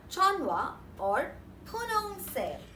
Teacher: The combination of n and h forms n as the pronunciation wherein the h is eliminated.